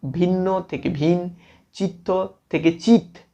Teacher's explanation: অনেক ক্ষেত্রে যুগ্ম ব্যঞ্জনের একটি লোপ পেতে পারে শ্বাসাঘাতের কারণে। যদি মাঝের ব্যঞ্জনে অধিক শ্বাসাঘাত আসে সেক্ষেত্রে অন্তব্যঞ্জন লোপ পেতে পারে, যেমন ভিন্ন থেকে ভিন, চিত্ত থেকে চিত, এগুলি হচ্ছে আমাদের যুগ্ম ব্যঞ্জনের একটির লোপ।